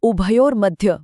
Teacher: उसी तरह उभयर मध्य बोलते समय भ और ध पर गौर करें। यह महाप्राण है। यानी अंदर से श्वास का गहरा प्रवाह आना चाहिए।